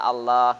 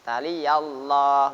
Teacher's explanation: Harokat fathah menghadapi lam jalalah, maka lam jalalahnya dibaca tafkhim. Tafkhim itu tebal.